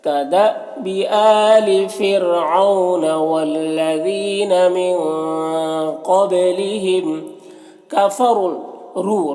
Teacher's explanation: با میں قلقلہ ہو رہا ہے تو با میں قلقلہ کریں گے